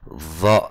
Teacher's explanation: Kalau dha itu yang samping kanan, samping kiri, itu tidak. Karena dia cuma di belakang gigi atas, di gigi atas pangkalnya.